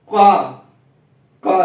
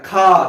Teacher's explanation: का देखिए धीरे से बोला जा रहा है, खा देखिए ज्यादा तेज से बोला जा रहा है तो महाप्राण हो जाए